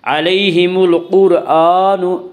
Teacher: حمزہ کے اوپر کھڑا زبر ہے، کھڑا زبر کو ایک الف کے برابر کھینچ کر پڑھیں گے